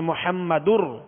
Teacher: محمد نہیں بلکہ محمدر. اب یہاں تنوین کی جو نون ساکن ہے اس کی آواز نہیں آئے گی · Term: ادغام